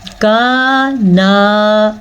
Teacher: دونوں کو کھینچ کے پڑھیں گے کیونکہ یہاں پہ 2 الف مدہ آ رہے ہیں